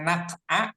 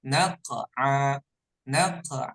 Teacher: qalqala maka Antum semuanya memantulkan huruf q ini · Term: qalqalah